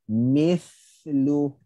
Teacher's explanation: Okey, dan kemudian dia ada hams rakhawah. Dia ada lepasan suara dan angin yang agak panjang.